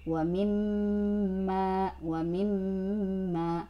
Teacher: Selain gunnah, setelah gunnahnya itu panjang 2 harokat, awas. Jangan sampai terabaikan panjangnya ya.